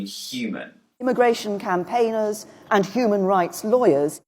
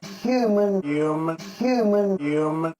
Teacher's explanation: in new york accents the h is dropped